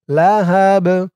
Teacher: সাকিন হয়ে যাওয়ার পর বাটি কলকলার হরফ হয়ে গেছে ধাক্কা দিয়ে পড়তে হবে